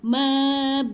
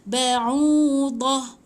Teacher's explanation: kalau kita berhenti ta bulat ni jadi matikan dia jadi ha. So dia akan bunyi mab'udah.